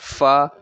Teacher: आपके जो अपर टीथ है वो लोअर लिप्स के साथ अटैच हो जाते हैं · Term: लैबियोडेंटल्स